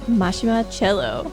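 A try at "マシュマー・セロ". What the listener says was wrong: Now, his name is spelled like it should be pronounced cello, but his Cero. Cero in Japanese. And it's not a long E, it's just like Cero.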